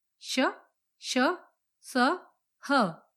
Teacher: इनके उच्चारण में वायु घर्षण के साथ यानी ऊष्मा उत्पन्न करती हुई निकलती है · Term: ऊष्म व्यंजन